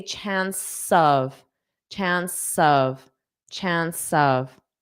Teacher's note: this chance, it ends in a S sound. Chance, chance. So I'm going to link those and say chance of